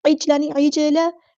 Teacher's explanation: जीम साकिन पर यहाँ पे कलकला होगा